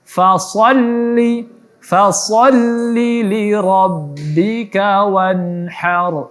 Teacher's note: nun mati bertemu ha izhar, maka dijelaskan izhar halqi, dibaca jelas wanhar, dan angin ha juga dijelaskan. Kemudian huruf ra-nya ditebalkan.